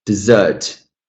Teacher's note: I know I have to stress the second syllable out of two.